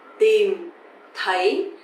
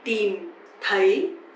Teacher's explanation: But the second one, TH, sounds like thờ, a bit softer, right? So tìm is dấu huyền, you have to go down, and thấy, dấu sắc, you have to go up.